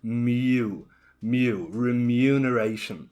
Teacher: So it has that kind of Y sound after the M.